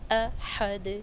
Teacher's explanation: ہا کی آواز واضح اور دال پر آواز کو حرکت دیں گے